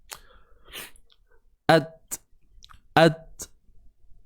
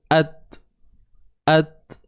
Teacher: huruf ta yang sukun dan akan adanya sifat hams, iaitu udara yang terlepas ataupun nafas yang terlepas